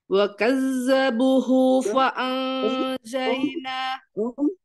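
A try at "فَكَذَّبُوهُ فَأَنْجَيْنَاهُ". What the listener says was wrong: fa bukan wa ya Fa ada ta'afufnya ya fakazabu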